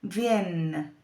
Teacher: ya no es con un sonido nasal, ya no tiene la onda encima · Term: E larga